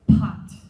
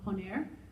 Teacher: there's a lot of air but if we're saying something in spanish for example the word poner there's barely any air that comes out